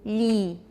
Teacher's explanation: for E you'll say Li and that will be quite palatalized and then go on through the series Li okay all right